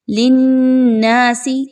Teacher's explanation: للناس لام اور نون کو آپس میں مضبوطی کے ساتھ ملائیے، نون مشدد کا غنہ کیجیے